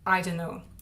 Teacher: Well, I drop the T sound on don't, and then the 2 N sounds in don't and no blend together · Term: connected speech